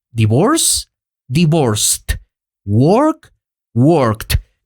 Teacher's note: es un sonido voiceless y en esos casos tenemos que agregar el sonido de la letra T al final. El resultado es divorce, divorced, work, worked, con ese pedacito de T al final.